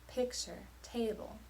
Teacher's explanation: picture and table both follow the long short stress pattern